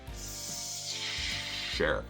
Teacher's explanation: you heard that S slide back into that sh sound